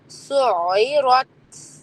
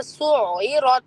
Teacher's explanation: ٹھیک ہے، آپ کو لگے گا کہ را تو موٹا ہے تو میرا جو ہونٹ ہے اور جو زبان ہے اس کا شیپ را کی طرف ہی رہے، لیکن حقیقت یہ ہے کہ تا پر سکون کے باوجود آپ نے اسمائلی فیس بنا کر پھر یہ ہوا کی آواز نکالنی ہے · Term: ہمس